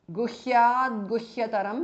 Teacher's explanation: Guhyat, the T changes to D because of Sandhi.